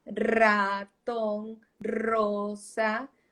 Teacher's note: la lengua empieza a vibrar porque la r requiere vibración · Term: vibración en la punta